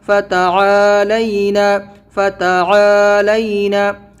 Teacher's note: عین کو کھینچنا ہے، فتح کو جلدی پڑھنا ہے، اور یہ لینا کو آرام سے جلدی پڑھنا ہے.